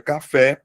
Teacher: Por que que ela é oxítona? Porque ela tem como sílaba tônica a última sílaba.